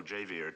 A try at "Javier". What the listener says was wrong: Javier. Javier, not Javier. The J is silent. You pronounce it like a ha. Javier.